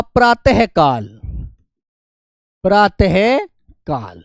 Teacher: विसर्ग की आवाज कंठ से आती है